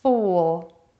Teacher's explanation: round your lips for the vowel and make it long. Then relax your lips as you move to the L and be sure to finish the word by touching the back of your top teeth with your tongue. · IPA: /u/